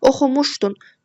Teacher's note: Oxumuşdun sözündə vurğu muşa düşür. Yəni ikinci hecaya.